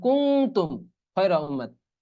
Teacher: কারণ কি, এই যে তা আসছে, নুন সেকেন্ড পর তা আসলে তো ইকফা গুন্না হয়, এই জন্য কুং তুম খয়রা উম্মাত।